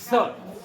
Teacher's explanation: जीभ ऊपर को कहां पर, मूर्धन्य स्थान पर स्पर्श करेगी, स, जैसे ठसा लगता है जैसे स, स, इस तरह बोलेंगे। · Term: षटकोण वाला सा